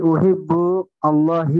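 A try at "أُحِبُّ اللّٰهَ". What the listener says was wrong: একসাথে। না, তাই কি লেখা আছে? হ্যাঁ, একসাথে পড়লে উহিব্বুল্লাহ। উহিব্বুল্লাহ। না, অবজেক্ট সবসময় মানসুব, অবজেক্ট সবসময় মানসুব, অবজেক্ট সবসময় মানসুব।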